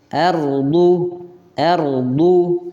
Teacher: ro ar ar ya ditebalkan ketika huruf ra didahului dengan fathah